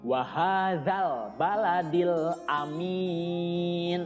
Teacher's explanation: Za ini lidahnya seperti hampir digigit sama gigi atas dan gigi bawah, ya. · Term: huruf za